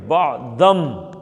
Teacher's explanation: اب اس کے بعد، اس نون کے بعد جب با آ جاتا ہے نا، با، یہ ادغام کا ایک اور قاعدہ ہے۔ اب اس نون کو میم کر کے پڑھیں گے